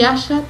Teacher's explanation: Otro rasgo característico de nuestro español es el sheísmo. Implica no distinguir entre los sonidos sh y i.